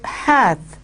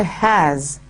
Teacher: So when he says "he that hath wife," you will remember that the TH has been replaced by the S. So the th sound has been replaced by the s sound. So the word hath has been replaced by has.